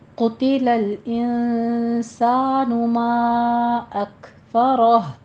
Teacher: آیت نمبر 17 دیکھیے، قتل الانسان ما اکفرہ، قوف کو پر پڑھنا ہے، قتی نہیں کہنا ہے